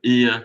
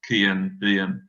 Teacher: This is the light blue column, I think. It is suggestive of a fronted central reflex of the historical UA, so something like ia, so again, kian, bian.